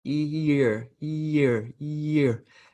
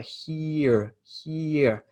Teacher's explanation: it sort of slides from one vowel to the next